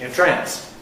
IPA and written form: ɪnˈtræns (entrance)